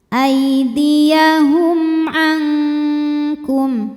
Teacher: Lalu berikutnya ada hukum izhar syafawi. Karena mim sukun menghadapi huruf selain mim dan ba yaitu ain ya. Maka mim kita bunyikan dengan jelas.